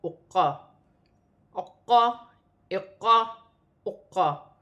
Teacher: قاف جو ہے حروف قلقلہ میں سے ہے، یہاں پر جما کر قلقلے کے ساتھ ادا کیا جائے گا